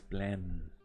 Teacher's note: se pronuncia casi sacando aire por la nariz plan por eso cuando están resfriados no pueden pronunciar la letra